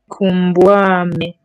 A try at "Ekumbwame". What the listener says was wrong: Ekumbwame. Remember E in Kikongo. Ekumbwame.